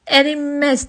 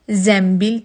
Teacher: Azərbaycan dilində sözün yazılışında N samitindən sonra M samiti gəlirsə, həmin o N samiti M səsinə keçir. Ərinməz və yaxud da deyək ki, zənbil yazılır, zəmbil deyilir.